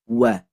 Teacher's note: Pertama di sini ada huruf waw. Huruf waw maka makhrajnya dari asy-syafatan yang jelas harus dibuka ketika harakat fathah.